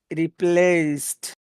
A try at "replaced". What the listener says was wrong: E. E. You're missing that E part. Replaced.